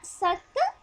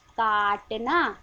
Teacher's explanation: सक जल्दी से आया है ना, काटना आराम से आया